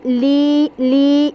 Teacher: یا میں ساؤنڈ آپ نے ناک سے باہر ہی رکھنی ہے